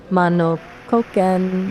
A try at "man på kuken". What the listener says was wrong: No. Don't say mano. Say man. Where's the O? There is no O. There is man på with a P. Po kuken.